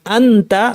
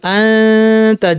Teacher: জিব্বাটাকে তায়ের মাখাজে কাছাকাছি নিয়ে না লাগিয়ে নাক থেকে গুণনা করলাম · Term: ইখফা